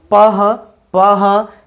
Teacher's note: ফ ফ উচ্চারিত হচ্ছে, প এর সঙ্গে একটি হ ধ্বনি যুক্ত হয়